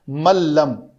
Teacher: من لم نون کے بعد لام ہے تو اس نون کو نہیں پڑھتے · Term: ادغام کامل